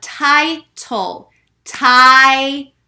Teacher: I'm hearing that long I sound, so I know it is open.